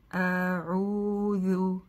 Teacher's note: Вытягиваем губы с айн и с этими же вытянутыми губами произносим после этого харф-даль. Да, сначала вернем их на место, потому что харф-даль требует как бы возвращение этих губ, да, иначе будет сложно точно ее произнести.